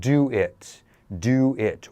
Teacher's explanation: What is important here is, again, the extra letter W sound between do it.